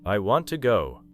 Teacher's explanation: You probably will not give every word the same strength. The important information is want, go. The word to may become much weaker.